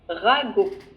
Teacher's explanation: tu prononces pas le T à la fin